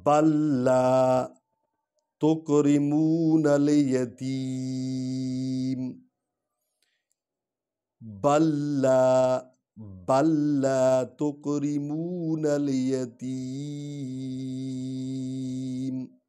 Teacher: اس میں ادغام کریں گے لام کو لام میں، لیکن نون غنہ نہیں کریں گے، بلا نون غنہ کے ادغام کریں گے کیونکہ لام پر شد ہے۔